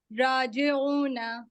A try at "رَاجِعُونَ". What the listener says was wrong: جی، تھوڑا سا را جے سنائی دیا، جو جے ہے وہ ساؤنڈ آف ای ہونی چاہیے، ہے نا؟